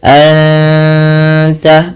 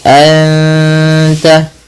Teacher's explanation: 2 harokat sambil ditahan gunnahnya, sambil ditahan bunyi suara dengungannya.